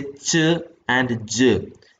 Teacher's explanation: of the tongue is also raised towards the heart palate so the tip blade and front of the tongue are active articulators